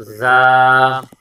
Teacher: آگے الف مدہ ہے، ایک الف کی مقدار کھینچ کے پڑھیں گے